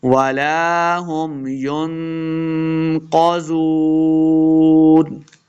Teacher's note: قاف کو موٹا پڑھیں گے، زال کو نرمی کے ساتھ پڑھنا ہے، زال پیش واو زو، واو مدہ ہو رہا ہے، یہاں پہ 2 حرکات، اس کو لمع کرنا ہے اور آخر پہ ہم نے وقف کر دینا ہے۔